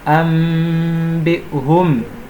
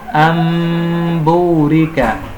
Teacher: Se formos a ver, você não consegue notar a presença do Nun. Por quê? Porque este Nun é basicamente alterado ao Mim. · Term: Iqlab